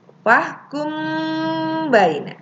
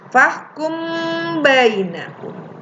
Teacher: Mimnya ditekan ya bersama-sama dengan ba. Tekan dua harkat ya. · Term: ikhfa safawi